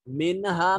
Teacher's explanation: نون ساکن کے بعد ہا حروف اظہار میں سے ہے، تو یہاں نون کو ظاہر کر کے پڑھیں گے